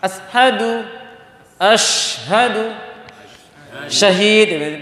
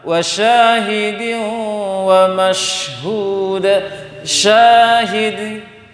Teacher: Walaupun Anda ingat seperti shin itu rasanya hamas. Dia sebenarnya hamas, dia tafashi. Jadi dia mengalir angin itu.